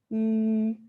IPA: y